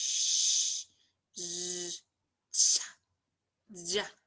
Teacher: so it's like a palatal sound, body of the tongue and the hard palate